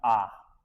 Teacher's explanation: आ में मुंह पूरा खुलता है।